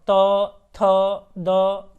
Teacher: और जैसे कि त बोलो, त, थ, द, तो इसमें ना हमारा दांत जो है वो दांत का यूज होता है, मतलब एकदम दांत से तो बोलेंगे नहीं, दांत को स्पर्श करके हवा निकलती है